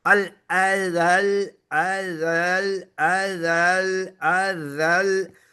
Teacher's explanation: जाल पर से दबाव शुरू किया, लाम पर जाकर यानी बिल्कुल पटक दिया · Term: नंबर